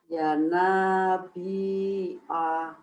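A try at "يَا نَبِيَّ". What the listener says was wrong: pendek ya nabi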